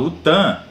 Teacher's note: esse TAM ele é nasal você colocar o dedo no nariz aí se você vai perceber que tem uma vibração